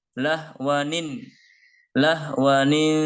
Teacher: setiap tanwin ya jika bertemu dengan Hamzah atau Alif maka cara membacanya ditambah dengan bunyi Nun kasrah · Jika dia bertemu dengan Hamzah maka cara membacanya harus ditambah dengan Nun kasroh dengan bunyi Ni